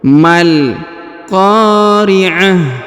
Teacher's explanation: Ko-nya dipanjangkan 2 harokat karena ada alif. Ta marbutah yang di ujung berubah menjadi ha sukun